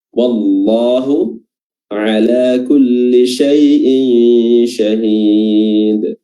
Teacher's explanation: ketika lafaz Allah disebutkan maka dia panjang dua harokat, ya, walaupun dia tidak ada tanda panjang di situ.